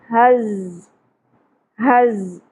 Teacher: ز شدت سے ادا ہوگا، سیٹی کی آواز بھی آئے گی